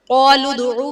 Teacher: قالوا ادعو میں قاف حرف مصالیہ ہے پر پڑھا جائے گا، دال حرف قلقلہ ساکن ہے تو یہاں پر قلقلہ خوب ظاہر کریں گے